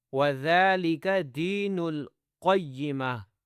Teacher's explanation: قوف کو موٹا کرنا ہے، ٹھیک ہے، آخر میں ہا کی آواز ہو